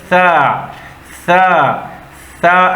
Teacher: बारीक हुरूफ है नरम हुरूफ है और इसको नरमी से अदा करना है सीटी के बगैर